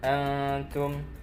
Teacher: nun mati bertemu dengan ta hukumnya ikhfa, samar-samar bacanya